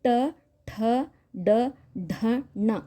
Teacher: ನಾಲಿಗೆಯ ತುದಿ ಒಂದು ಅಂಗಳವನ್ನ ಟಚ್ ಮಾಡಿ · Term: ಮೂರ್ಧನ್ಯ